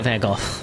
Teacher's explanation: It's like a very sort of soft and guttural Gogh.